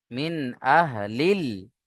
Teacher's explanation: এখানে আলিফটা বাদ দিয়ে আমরা লামকে ধরে পড়ছি, তাই এখানে হরুফে কমারি বলবো।